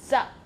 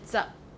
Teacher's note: For example, if you say number 10, you say za. This P is unreleased, so you just have to close both of your lips, but you don't make any sound. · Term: final P